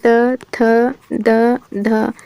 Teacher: दंत में आते हैं त थ द ध, ये आते हैं।